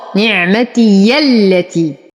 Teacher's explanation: انتقل من فتحة الياء إلى تشديد اللام